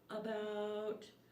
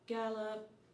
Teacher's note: The schwa sound can be identified at the beginning of the word about and at the end of gallop.